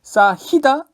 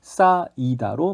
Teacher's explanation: 자, 히읗 탈락은요, 말 그대로 히읗이 탈락하는 것인데요. 히읗으로 끝나는 어간 뒤에 모음으로 오는 형식 형태소가 오면은 히읗 소리가 없어집니다